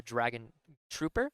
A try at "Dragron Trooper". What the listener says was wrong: Dragron Trooper, that's right. Not Dragon, Dragron Trooper, yep.